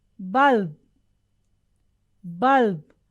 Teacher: the first bur is pronounced but the second ba is very very low very very minutely heard